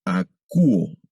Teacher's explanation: El diptongo omicron ipsilon se va a pronunciar como U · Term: sonido de la U